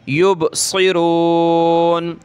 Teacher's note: صاد کو موٹا کریں